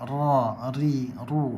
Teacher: huruf ra, ujung lidah bertemu dengan lelangit atas yang hampir ke tengah lelangit